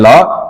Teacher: पार्श्विक मतलब जीभा के दोनों पार्श्व यानी किनारों से जो उच्चारित होता है उसको कहते हैं ल, ल के रूप में आपके पास ये पार्श्विक एक है।